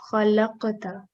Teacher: So remember to do qalqala on this qaf. So it'll be jerk on qaf